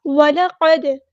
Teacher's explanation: وَلَقَدْ ولا واؤ اور لام کو باریک پڑھنا ہے، لائٹ لیٹر ہے. قاف ہمارا ہیوی لیٹر ہے، پورا ادا کرنا ہے. فل ماؤتھ لیٹر ہے یہ. وَلَقَدْ دال ساکن پہ کلکلا ہو رہا ہے، قد نہیں پڑھنا، قد.